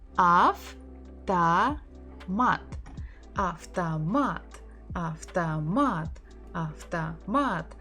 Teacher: So we stress mat.